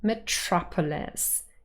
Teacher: The second syllable, trop, is the one that carries primary stress